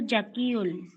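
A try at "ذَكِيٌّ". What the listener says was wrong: জাকিউন পড়েন না, এটা তো জাল, তাই না? জালকে একটু নরমালি জাকিউন নরম করে উচ্চারণ।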